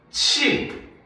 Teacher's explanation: 히읗과 지읒이 합쳐져 가지고 뭘로? 치읓으로 바뀌어 소리가 나는